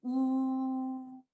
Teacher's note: ये आवाज आप वोकल कॉर्ड की थरथराहट से तो आ रही है, लेकिन इसके साथ आपके लिप्स भी सर्कल होंगे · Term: लेटर वाव मद